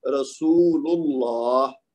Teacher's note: اب رسول کا جو آخر میں لام ہے اس کے اوپر پیش ہے نا, تو اس کی وجہ سے پھر اللہ کا لام موٹا پڑا جائے گا